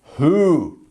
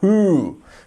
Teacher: We want to prolong that U sound.